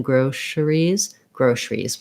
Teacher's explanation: we just go right from the sh to the r with basically dropping that that schwa in there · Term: reduction